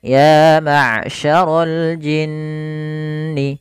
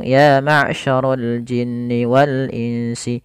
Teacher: Kita menahan dulu suara n ya atau suara m-nya sepanjang 2 harakat. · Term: gunnah